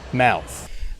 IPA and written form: maʊθ (mouth)